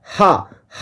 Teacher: हा हा कहिए तो डायरेक्ट हवा जो है बाहर निकलता है हा कंठ से डायरेक्ट निकलता है कहीं भी यह आपको जो है मुंह के किसी भी भागों को स्पर्श नहीं करते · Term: कंठ व्यंजन ध्वनि